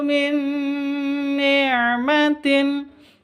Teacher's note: cara bacanya langsung masuk ke Nun yang kedua